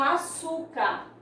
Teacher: Aí aqui eu tenho açúcar, última, penúltima, o su é que é a sílaba tônica, é a sílaba que tem o tom mais forte, é a sílaba mais forte da palavra açúcar.